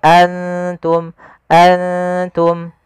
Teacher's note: ikhfa itu membaca antara izhar dan Idam maka Mak di sini nunnya kita samarkan ke huruf ta langsung seakan-akan kita melafalkan huruf ta